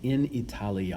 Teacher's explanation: when italia is an object of the preposition in it's in something called the ablative case and that means that the a has to be lengthened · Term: long a